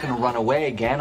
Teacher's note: Normally, we link the expression going to, so it is reduced to gonna. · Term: connected speech